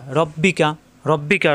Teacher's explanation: রয়ে জবর আসলে র মোটা হবে, রা হবে না